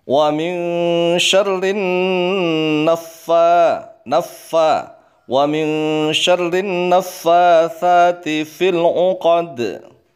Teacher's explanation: Tetapi wa min syarri, wa min syarrin kemudian ketemu nun tasydid, gunnah. Bacaannya dihentikan sejenak di dalam huruf nun. Kemudian fa-nya juga tasydid.